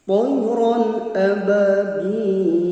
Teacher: Aba ini mad tabi'i yang panjangnya 2 harakat atau 1 alif. Tidak boleh dibaca lebih panjang dari 2 harakat.